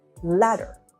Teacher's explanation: in the word letter, the stress is normally on the first syllable like letter.